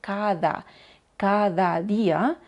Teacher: la di en español a veces es pronunciada de una manera muy suave poniendo la lengua entre los dientes